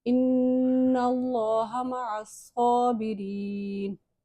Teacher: اللہ کے نام سے پہلے زبر آ رہا ہے تو ہم اس کو موٹا پڑھیں گے. صاد پہ تشدید ہے اور کھڑی زبر ہے اس لیے ذرا سا جماؤ دیکھ کے پڑھیں گے اور ایک الف کی مقدار لمبا کر کے پڑھیں گے. یا مدہ ہے، اس کو بھی ایک الف کی مقدار لمبا کر کے پڑھیں گے.